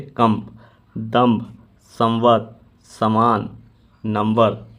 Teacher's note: पहले वाले अनुस्वार का म के समान उच्चारण होता है